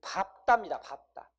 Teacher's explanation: 요 밥다입니다, 밥다. 이 밥다는 뒤에가 뭐가 오든지 간에 항상 비읍으로 읽으셔야 돼요